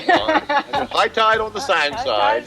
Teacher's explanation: that vowel of tide is back, so it sounds more like toy